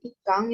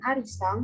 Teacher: pelafalan fonem n diubah menjadi eng